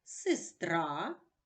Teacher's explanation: у слові сестра звук е не наголошений і вимовляється наближено до звука и